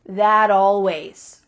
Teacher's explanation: We link together words by making the final T change into a D.